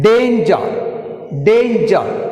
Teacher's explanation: the stress is shown first syllable Dan